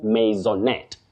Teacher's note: Maiso, then net with a stress.